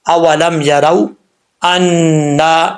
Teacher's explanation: نون کے اوپر شد ہے، ایک الف کی مقدار غنہ کریں گے، آگے الف ہے، ایک الف کی مقدار لمبا کریں گے۔